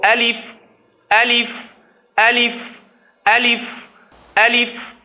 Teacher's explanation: منہ بھر کے جو آواز ادا ہوتی ہے منہ کے درمیانی حصے سے، خلا سے، وہ ہے الف کی آواز